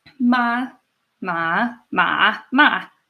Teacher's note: the second tone is up and the fourth one is down